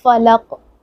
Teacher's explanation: اینڈ پہ قلقلہ کریں گے کہ ہلا کر پڑھیں گے ، فلق نہیں پڑھیں گے فلق، ٹھیک ہے، فلق۔ قل اعوذ،